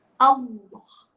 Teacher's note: Bila kita sebut Allah, automatik kita punya al dia akan jadi tebal. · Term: lam jalalah